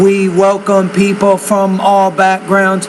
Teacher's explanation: You're speaking pretty much with rising tone at the end of every idea, but you definitely don't want to do that.